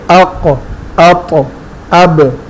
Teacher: جب ان ساکن ہو تو ان کے ادائی میں آواز مخرج سے ٹکرا کر لوٹتی ہے، آواز باؤنس کرتی ہے، ریباؤنس کرتی ہے. اس کو ہم تفصیل سے پڑھ چکے ہیں، جیسے اق، اط، اب.